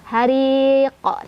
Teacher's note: pantulannya lebih ke fathah ya, ke o. Hariqo. Tapi bukan kita sengajain bilang ko, itu pantulan aja ya.